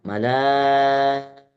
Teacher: Mad wajib muttasil panjangi lima harakat